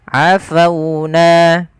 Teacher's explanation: ada huruf wau yang didahului dengan huruf fathah maka ia kita namakan dengan bacaan lin yang di mana lembut di dalam melafalkannya